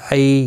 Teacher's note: یالین ہے، تھوڑا نرمی کے ساتھ کھینچ کر ادا کریں گے